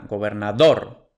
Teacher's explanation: terminada en s entonces lleva tilde simplemente la siguiente es gobernador la sílaba tónica es la última gobernador Entonces es una palabra aguda pero como no termina en